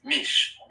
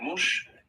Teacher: these short vowels are more subject to change, so you might hear mush, meaning not.